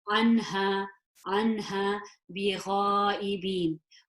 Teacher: This is a her, the deep one, and that is a throat letter. So I would pronounce this noon nice and clearly, no gunna.